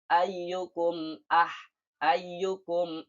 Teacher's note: dibaca dengan jelas tanpa mendengung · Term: izhar syafawi